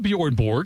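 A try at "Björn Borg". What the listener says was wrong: no, you put the J on the second B.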